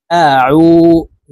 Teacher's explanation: আইন হরফকে হলকের মধ্যখান থেকে চাপ দিয়ে উচ্চারণ করব